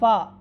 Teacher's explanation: फ़ा का जो मखरज है, ये सनाया उलिया के जो किनारे हैं वो निचले होंठ का जो तरी वाला हिस्सा है, ये वाला हिस्सा, तरी वाला हिस्सा, गीला हिस्सा जो है, वहाँ पर लगाने से हरफ़े फ़ा अदा होता है। सनाया उलिया के किनारे नीचे वाले होंठ के तरी वाले हिस्से से लगने से हरफ़े फ़ा अदा होती है।